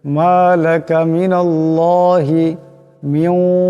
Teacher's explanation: এখানে নুন সাকিনের উপরে ওয়াও আসছে, এখানে ইদগাম হয়ে যাবে, ইদগামের একালি পরিমাণ গুণ হবে।